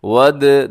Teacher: दाल को हिलाना है, दाल हरूफ कलकला में से, हरूफ कलकला 5 होते हैं, काफ तवा बा जीम दाल, उसके अंदर दाल भी जो है वो शामिल है।